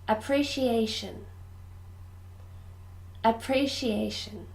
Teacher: five syllables appreciation ah pre she a sure appreciation this syllable the fourth syllable is stressed